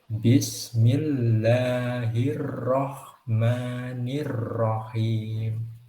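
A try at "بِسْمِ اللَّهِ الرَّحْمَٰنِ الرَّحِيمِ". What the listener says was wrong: Mungkin catatan sedikit dari saya untuk itu getarnya roh mungkin bisa ditahan sedikit lagi supaya getarnya tidak terlalu banyak. Nah, gitu ya. Bismillahirrahmanirrahim.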